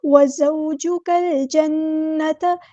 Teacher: وزو، وزوجک ال، کاف کو ہم نے لام کے ساتھ ملا دینا ہے، حمزۃ الوصل ہمارا ڈراپ ہو جائے گا۔ لام یہاں پر لام قمریہ ہے، لام کو ہم یہاں پہ ظاہر کر کے پڑھیں گے۔ وزوجک الجنۃ، نون پہ غنہ زمانی ہو رہا ہے تو ایک الف کے برابر رکیں گے، تا کو لمبا نہیں کریں گے، حرکات کو لمبا نہیں کرتے۔